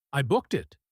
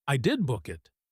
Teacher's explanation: He stresses the word did. He doesn't say, "I booked it." He says, "I did book it." This is a very common way to defend yourself or to insist on a fact in English.